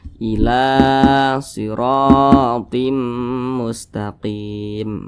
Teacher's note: Nah, atau memiliki tanda baca baris ke atas. Nah, mad tabi'i panjangnya 2 harokat atau kira-kira 2 ketukan.